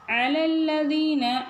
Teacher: ஐன் வந்து கரெக்டாக தொண்டையில் சொல்லணும்